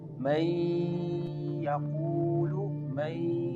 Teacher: The noon merge with yah. · You can feel the sound is going into your nose. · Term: idgham